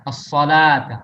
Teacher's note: Sa tebal, la-nya tipis.